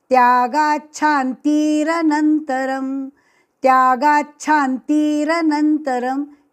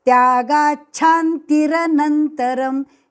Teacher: ती दीर्घ नहीं है ती ह्रस्व है